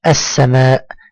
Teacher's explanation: فانا انتقل من الالف في كلمه السماء من الالف الى السين مباشره ولا انطق حرف اللام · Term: اللام الشمسيه